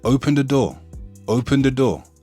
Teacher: the th is often pronounced with a t or a d instead of th